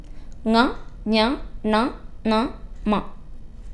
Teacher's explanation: അനുനാസികം നമ്മൾ മൂക്കും വായും രണ്ടിന്റെയും സഹായത്താലാണ് ഉച്ചരിക്കുന്നത് · മൂക്കിൻ്റെയും കൂടി സഹായത്താൽ, അതാണ് നാസികയുടെ സഹായത്താൽ പ്രൊനൗൺസ് ചെയ്യുന്നതാണ് അനുനാസികം.